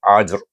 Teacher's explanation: Pada huruf ra kita sukunkan. Walaupun dia sukun dia tetap bertakrir sana. · jim adalah huruf qalqalah. Dia ada tengah kalimah dibaca dengan qalqalah sugra.